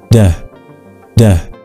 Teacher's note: We can feel the vibration when we say duh. So duh is a voiced sound.